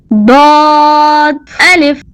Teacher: صاد پر ایک نقطہ ضاد ہے، زبان کی کروٹ کو اوپر کی داڑھوں سے لگا کر موٹا پڑھیں۔